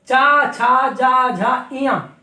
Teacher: तालु में टच होने के कारण जिह्वा के ये तालव्य वर्ण गिने जाते हैं